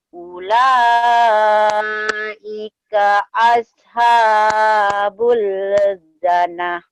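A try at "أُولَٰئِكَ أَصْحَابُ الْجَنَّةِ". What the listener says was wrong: Jannah ya, dengung lagi teh sama soknya ausha.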